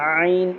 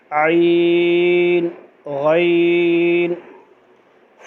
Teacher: عین اس طرح ایسا نہیں پڑھیں کہ عین کی آواز ناک میں چلی جائے، بلکہ ناک میں نہیں جائے